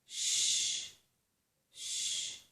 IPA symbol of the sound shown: ʃ